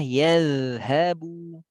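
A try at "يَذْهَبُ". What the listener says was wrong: Tapi kalau yazhabu kepanjangan dari kadar rohwa. Yazhabu saja cukup, jangan yazhabu, itu seperti 2 harokat.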